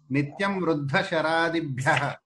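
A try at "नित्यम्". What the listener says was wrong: అవును, సంధి చేయండి, విసంధి చేయండి, సంహిత విడతేయండి. నిత్యం మనము మకారం పలకండి, ఓష్ఠ్యంగా పలకండి. నిత్యం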